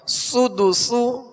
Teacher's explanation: دونوں سین میں سختی کی آواز ہوگی، یعنی سیٹی کی آواز ہوگی، سختی سے ادا کریں گے اور باریک پڑھنا ان کو